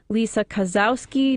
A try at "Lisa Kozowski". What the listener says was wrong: It's Lisa Kosowski. The W is pronounced like an F. I let the Kosowski go because it's close enough.